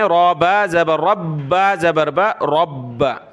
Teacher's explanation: را کلرفل ہے, موٹا کیا, پلس میں را کو با کے ساتھ ملایا, با کے اوپر تشدید ہے تو با کو جمع کر سختی کے ساتھ پڑھنا ہے